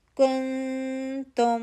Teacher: تو یہاں پہ ہم اخفا کریں گے، آگے تا پتلا لیٹر ہے تو پتلا اخفا کریں گے. کن تا کے پاس جائیں گے، کن تم.